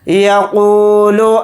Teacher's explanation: یا کو جلدی پڑھیں گے، قاف کے ساتھ واو مدہ ہے، قاف واو پیش قو کو تھوڑا کھینچ کر پڑھیں گے، قاف کو یہاں پر موٹا یعنی پر پڑھیں گے